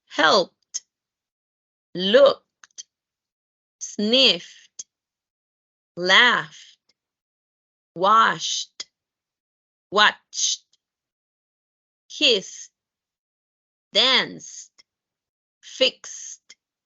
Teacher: lo que estás haciendo es omitiendo el sonido de la E y pronunciando esa D final como una T